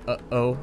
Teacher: like when you say uh oh that's a glottal stop